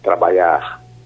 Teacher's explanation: pode-se perceber a frequência na substituição do som consonantal LH pelo som vocálico I